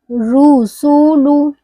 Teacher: آگے جا رہی ہے میری آواز اور ہونٹ بھی میرے گول ہو رہے پڑھتے وقت. آپ بھی دیکھیے آپ کے ہونٹ گول ہو رہے ہیں کہ نہیں. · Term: پیش